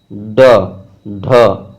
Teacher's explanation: फेंका हुआ। जैसे ड, ढ, एक झटके से जीभ नीचे की तरफ आता है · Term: उत्क्षेपित ध्वनि